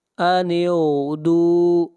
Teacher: غین کو موٹا پڑھیں گے، غین حروف مستعلیہ میں سے ہے۔ دال کو کھینچ کر پڑھیں گے ایک الف کے برابر، یہاں پر واو مدہ ہے، اور اس مد کو مد اصلی کہتے ہیں، اور اس کی مقدار ایک الف ہے۔